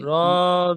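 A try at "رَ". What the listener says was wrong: আর রা নয়। র। র মুখ গোল করে বলুন। রা হবে না, র।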